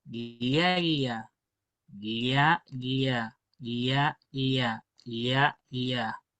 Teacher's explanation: vamos a decir que es una mezcla muy parecida a una L y una I